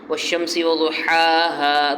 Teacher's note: ہا جو ہے وہ درمیان حلق کے درمیان سے نکلتا ہے